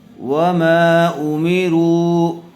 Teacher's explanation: واو مدہ کے بعد حمزہ دوسرے کلمے میں آیا ہوا ہے، اس لیے مد منفصل کا قاعدہ ہوگا، را کو کھینچ کر پڑھیں گے